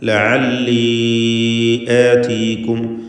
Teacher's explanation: ഇതിലുള്ള യാഇൻ്റെ ദീർഘം മദ്ദ് മുൻഫസിൽ ജായിസാണ്. 4-5 ഹറക്കത്തിൻ്റെ അളവിൽ ദീർഘിപ്പിക്കേണ്ടതാണ്.